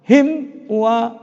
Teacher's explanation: Jadi begitu merapat bibir kita, suara mim itu hilang, langsung wa. Jadi tidak boleh kita baca himwa, himwa, tidak boleh. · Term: izhar safawi